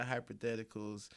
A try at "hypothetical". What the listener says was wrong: There's no R. Hypothetical.